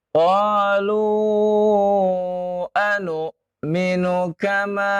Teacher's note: Tidak dipanjangkan nu-nya. Tidak dipanjangkan.